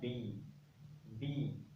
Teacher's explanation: जैसे मैंने बोला बी, बी, तो हमारे दोनों लिप्स सटे, हवा रुकी फिर बाहर आई